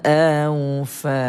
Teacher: Baca dengan lembutkan sebutan awfa. Kemudian alif tidak berbaris, jumpa dengan mad asli, panjang 2 harokat.